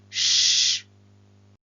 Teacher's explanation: we have the voiceless fricative shh this is a voiceless consonant